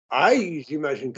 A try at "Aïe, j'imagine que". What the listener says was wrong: That's it. You were even pitch perfect.